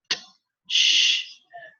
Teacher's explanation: That these two sounds are like a combination of one plosive, that is t, and one fricative, that in this case is sh, t, sh. So this sound is like a sh, but stopped. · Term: affricate